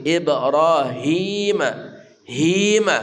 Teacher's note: Ib ya Ibrahima Ibrahima ro ya dari ujung punggul lidah kita ro tebal tafkhim ibrahima hima ha dari pangkal kerongkongan